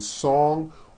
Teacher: song ends with a voiced ng sound